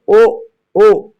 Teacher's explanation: कंठोष्ठ, कंठ और ओष्ठ दोनों में छो रहा है, छोएगा, उसके बाद हम लोग उसको बोल पाएंगे, नहीं तो बोल भी नहीं पाएंगे। जैसे ओ, इसको बोलने के लिए हम लोग को कंठ और ओष्ठ दोनों का यूज करना पड़ेगा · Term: कंठोष्ठ वर्ण